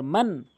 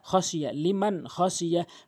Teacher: মান হামজা জবর আ দাল জেরে দি নুন জবর না, মান আযিনা লাম জেরে লি মিম নুন জবর মান, মাং বলা যাবে না, গুণনা করা যাবে না, মান বলতে হবে।